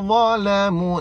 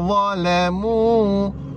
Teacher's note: huruf dha lidah keluar